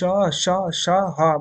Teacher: निकलती है ना तो श श श ह बोलोगे आप तो हवा को निकलने में थोड़ी मेहनत करनी पड़ रही है यानी कि संघर्ष करना पड़ रहा है